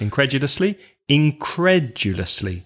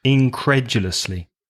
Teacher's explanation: Stress the second syllable. Now that's a long word. 5 syllables.